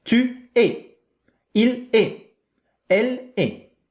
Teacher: It's just the sound e. The T The S, we don't hear it.